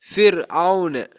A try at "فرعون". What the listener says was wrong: ஐன் சேரணும். அவுன்னு அலிப் சேரப்படாது.